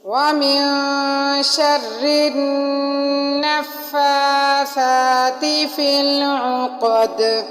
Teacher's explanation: فی العقد میں بھی قاف کو موٹا پڑھا اور دال پر ہم نے قلقلہ کیا، لفظ کو تھوڑا ہلا کر پڑھا. وقف کی صورت میں ہم اس کے اوپر جو ہے وہ جزم لگ جائے گی، یہ لفظ ساکن ہو جائے گا.